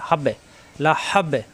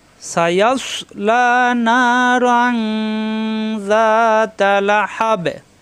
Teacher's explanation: অক্ফ হলে লাস্টের অক্ষরে সাকিন হয়ে যাবে, তখন বাই সাকিন হলে কলকলা হয়ে যাবে। হা মিলবে বায়ের সাথে, হাব্বে লা হাব্বে ধাক্কা হবে।